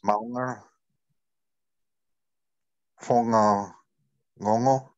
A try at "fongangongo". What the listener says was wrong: Awesome. That sounded great.